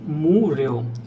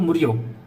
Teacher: However, the Chinese notation above are 2. So I have to use 1 beat for mu and 1 beat for ryo